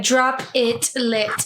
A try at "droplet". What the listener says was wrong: No, droplet. Droplet. Yeah, technically it's droplet, but it's like you're emphasizing the P, like you're emphasizing a syllable that's not there between the P and the L. So a droplet.